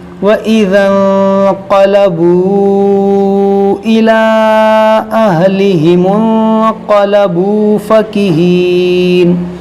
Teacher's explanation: نون ساکن کے بعد قاف یہاں غنہ کریں گے